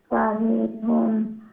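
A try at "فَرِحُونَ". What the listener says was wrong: ফারিহুন শেষে দিয়ে মধ্যে আরিজ হবে, লম্বা হবে, ফারিহুন এরকম।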